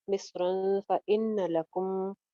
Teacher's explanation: रॉ के ऊपर तनवीन है, आगे फा है, यहाँ पे इख्फा हो जाएगा